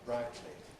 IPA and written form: ˈbraɪtli (brightly)